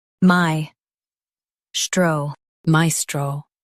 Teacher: Stress my and keep stro smooth.